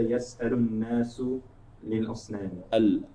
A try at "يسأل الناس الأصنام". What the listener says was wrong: الأصنام. لا, not there's no لي.